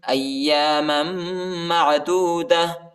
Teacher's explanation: حمزہ کو یا کے ساتھ ملائیں گے، یا کو شدت کے ساتھ سختی کے ساتھ پڑھیں گے اور پہلے والی میم کو دوسرے والی میم کے ساتھ ملائیں گے اور غنہ بھی کریں گے · ادھر ہم وقف کریں گے، وقف کی صورت میں تا کو ہا پر تبدیل کریں گے